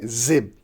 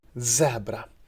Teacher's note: to take the front part of your tongue towards alveolar ridge so we have voice alveolar like z